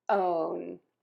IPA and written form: oʊn (OWN)